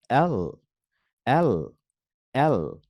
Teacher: জিহ্বাটা একদম উপরের তালুতে চলে যাবে